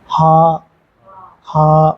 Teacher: ஹா ஹா ஹ அப்படின்னு சொல்லி முடிக்க கூடாது. அதுவும் நெடில்.